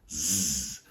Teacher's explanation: That means it sounds more like a Z sound. Your vocal cords are vibrating when the S is produced.